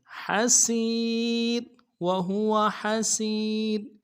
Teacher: کریں گے، وقت کی صورت میں را کو جزم کریں گے، تو یا بھی جزم ہے اور را بھی، تو را کو باریک کریں گے